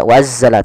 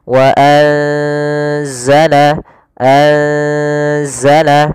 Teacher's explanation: Yaitu di sini kita mendapati ada nun yang berharokat sukun atau yang tidak dikasih harokat bertemu setelahnya huruf zai, yang mana zai termasuk salah satu huruf ikhfa. Maka cara membacanya itu kita samarkan nunnya kepada huruf zai.